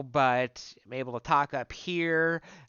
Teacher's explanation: Second layer is larynx height. So I'm shortening my vocal tract. Um, if I do it right, it should sound buzzy and that sort of thing.